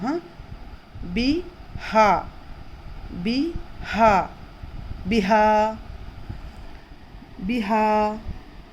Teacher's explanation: ہا حرف حلقی، حلق کے نچلے حصے سے ادا ہوگا